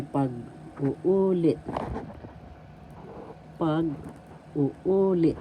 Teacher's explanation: So first pag, second u, and the third u, that's where the accent is.